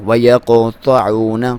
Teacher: قاف اور طا کو موٹا پڑھا جاتا ہے، یہاں پہ واو مدہ ہے، ایک الف کے برابر لمبائی